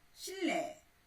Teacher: 니은은 유음 리을의 앞이나 뒤에서 리을로 발음된다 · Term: 유음화